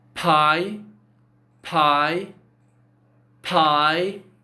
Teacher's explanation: you can actually see that there is something like blowing out some air from your mouth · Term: aspiration